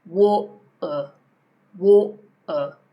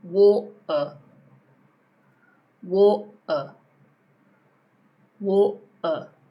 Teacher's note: if you've got a T between two vowels, it's often a glottal T.